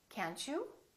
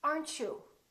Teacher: when we have the word you followed by the T for example can't you this T also becomes kind of a CH sound